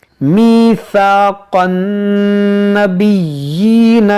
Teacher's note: ये नून मुशद्दद है, इसमें गुन्ना करेंगे, और यहाँ पर या मुशद्दद है, इसको पढ़ेंगे 2 बार, और इस पर खड़ी ज़ेर है, इसको थोड़ा खींच कर पढ़ेंगे।